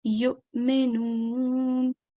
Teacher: Hamza is more important. Okay, waw, treat it like a blank letter, silent letter. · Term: Hamza Sakin